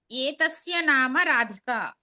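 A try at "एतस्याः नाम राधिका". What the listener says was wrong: విసర్గం మళ్ళీ చెప్పు, విసర్గం స్పష్టంగా చెప్పాలి.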